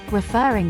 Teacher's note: the word refer has a stressed fur syllable